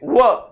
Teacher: दाताला बी जिभेचं टोक लागते आणि ओठाची हालचाल होते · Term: दंत्यौष्ठ्य वर्ण